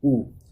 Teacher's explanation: जबकि आप बोल के देखें ऊ बोल के देखें एक बार, ऊ, तो ऊ बोलने पर आप देखेंगे कि आपके जो होठ हैं वो कैसे हैं, व्रत के आकार के हैं। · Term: व्रतमुखी